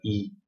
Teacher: voyelle d'avant, haute, non nasale, non arrondi